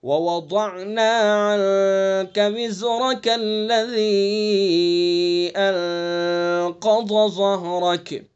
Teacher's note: دیکھیے وزرک پر اگر وقف نہیں کریں گے تو پھر کاف کو لام میں ملائیں گے